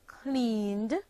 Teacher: the ed ending of voiced sounds takes on a d sound when placed at the end of verbs